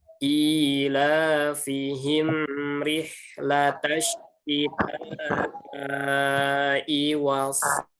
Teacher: Jadi mim ini tidak boleh tertahan kalau dia bertemu ro, tapi dia tawasud. · Mim sukun bertemu ro. Ingat, mim sukun tidak boleh dipantulkan ya, karena dia bukan huruf qalqalah.